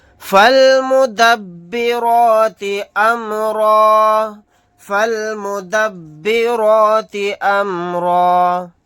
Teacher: یہاں پر آیت کرنے کی صورت میں را الف کے ساتھ ایک زبر کو پڑھیں گے، دو زبر نہیں پڑھے جائیں گے